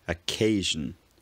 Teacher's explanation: The vowel in words like occasion starts with a higher tongue position